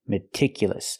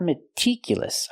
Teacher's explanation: Use the short I sound like this is. Remember, it's more open.